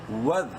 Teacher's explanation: دال کو پراپر اپنے مخرج یعنی زبان کی نوک سامنے والے دانتوں کے بیچ میں لگا کے پڑھنا ہے